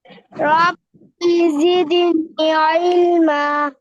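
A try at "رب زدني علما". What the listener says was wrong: হ্যাঁ আপনার এখানে আবার টান কম হচ্ছে, এখানে একটু একটু টান দিতে হবে। রব্বি জিদনি ইলমা।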